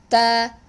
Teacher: The ta is a letter that is emitted from the tip of the tongue, and our tip will be touching the gum lines, upper gum lines. Okay, behind the central incisors, behind the 2 upper teeth.